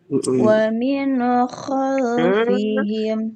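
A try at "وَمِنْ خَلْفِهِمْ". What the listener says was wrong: Nyambung, Bun, nyambung dan mantul itu, Bun. Jangan terlalu lama, Bun, nunnya. Wa min khalfihim. Jangan terlalu lama, tapi jangan Wa min khalfihim.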